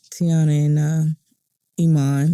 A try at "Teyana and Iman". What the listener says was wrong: Don't say her name like that, okay? I need you to just say it again and say it right because you sound like you was a little sad and her name is so powerful.